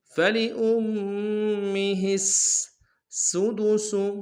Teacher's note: سین کی سیٹی باریک ہوگی، اگلے سین کی بھی سیٹی باریک ہوگی جو آخر میں سُدُسُ۔